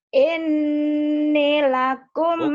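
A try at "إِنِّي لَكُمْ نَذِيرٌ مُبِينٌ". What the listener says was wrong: Salah nekennya. Ini metode penekanan ya yang kau inginkan. Ini kau kurang menekan, kurang penekanan.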